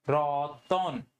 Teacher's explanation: কিন্তু তুমি যখন রতন লিখতেছো, হসন্তটা দিচ্ছ না, তখন কিন্তু তুমি উচ্চারণও করতেছো কি রতন, ঠিক আছে। এখানে কিন্তু একটা অ এর উচ্চারণ চলে আসতেছে, এই অটা কোথা থেকে আসলো, এই অটা আসছে স্বরাগমের মাধ্যমে, যেটা মধ্য স্বরাগম বা বিপ্রকর্ষ